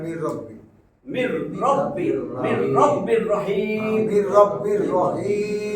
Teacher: নুন সাকিনের পরে র আসছে, তাসদিদ দিয়ে মিলাবো গুণনা ছাড়া। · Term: ইদগামে বেলা গুন্না